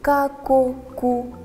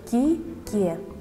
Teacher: Верно, глухой. А он твердый или мягкий? Правильно, он может быть и твердым, ка-ко-ку, и мягким, ки-ке.